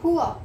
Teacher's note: Poor नहीं बोलना, poor नहीं बोलना, poor, poor. ये जो आपका लास्ट में आर है, दिस शुड बी साइलेंट